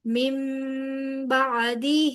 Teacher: گے، تحستمل، تمل عج، جیم پہ کلکلا، عجل من بعدہ، میم نون ساکن کے بعد با آ رہا ہے لہذا نون کی آواز کو میم سے بدل دیں گے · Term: اقلاب